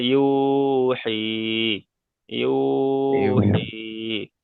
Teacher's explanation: ওয়াও মাদ্দাকে একালিপ পরিমাণ টেনে পড়েছি। আর দ্বিতীয়টা হলো ইয়া সাকিনের ডান দিকে জের এসছে ইয়া মাদ্দা, তাই ইয়া মাদ্দাকেও একালিপ পরিমাণ টান দিয়ে বলেছি